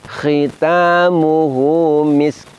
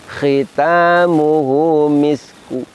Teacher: Jadi miskun apabila kita wakofnya pakai raum maka bunyinya menjadi misku. Jadi ada bunyi domahnya tetapi bunyi domahnya lemah. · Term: wakof raum